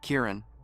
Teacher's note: You have to pronounce it with the stress on the first syllable and say the rest more gently.